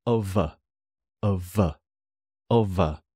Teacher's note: Of a, the F likes to become a V, so of a, of a, of a.